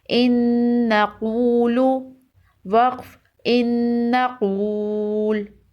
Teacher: نون مشدد ہے، نون کے اوپر تشدید ہے۔ نون مشدد اور میم مشدد ہمیشہ غنہ کے ساتھ پڑھے جاتے ہیں۔